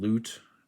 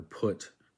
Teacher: it makes a u sound as in loot the long version or put the short version